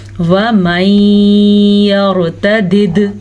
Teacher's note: یہ ادغام بالغنہ کے ساتھ اور دال کے اوپر جھٹکا ہے تو آپ نے جھٹکا ضرور دینا ہے